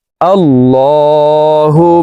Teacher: সর্ব অবস্থায় নাকের বাসি থেকে গুন্নাহ করিয়া পড়িতে হয় তো এই হা তাসদিদওয়ালা মিমের সাথে তিন সেকেন্ড পরিমাণ গুন্নাহ করে ধরে রেখে পড়ব